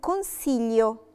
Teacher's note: ما نطقتش خالص لا لترة جي ولا جي دولتشي ولا جي دورا، نطقت ال على طول